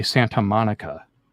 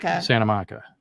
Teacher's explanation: we're actually losing the T altogether because N is easier to say than T